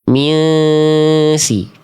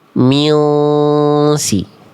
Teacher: Kalau tipis pangkal lidahnya turun minsi. Kalau tebal naik minsi.